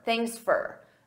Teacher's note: At a natural pace, native speakers, we reduce sound. So for becomes fur